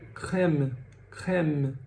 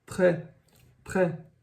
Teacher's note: acento grave a gente acaba pronunciando a palavra a a letra como um som aberto ou seja vai ficar um som e como o nosso e em português